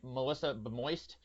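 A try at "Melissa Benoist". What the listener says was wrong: Well, I mean, it's actually not wrong. You just pronounced her N as an M, but noise.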